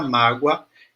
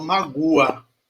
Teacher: mágoa repare que eu não falo mágua certo eu falo mágoa esse U ele pega rabeira no som do a mágua pega uma carona ele não é um som pronunciado eu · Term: semivogal